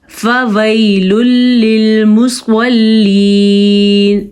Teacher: سواد پر یا کو کھینچ کے پڑھیں گے کیونکہ یہ یا مدہ ہے, لیکن یہ یا لین ہے, یہ نرمی سے پڑھی جاتی ہے.